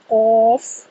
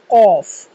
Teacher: قاف زبان کی جڑ اور تالو کے نرم حصے سے قاف کی ادائیگی کی جائے گی۔ قاف کو ہمیشہ پورا ادا کیا جائے گا۔